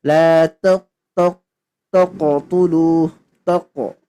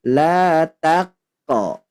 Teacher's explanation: Karena huruf ta dia bukan huruf isti'ala atau huruf tebal. Maka tidak boleh dibaca tebal. Jadi la taqo, ta baru ke qaf.